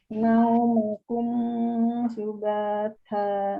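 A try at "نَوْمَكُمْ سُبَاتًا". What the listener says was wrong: Nah, jangan ditahan mimnya, kan ini izhar, jadi jelas. Naumakum subatan.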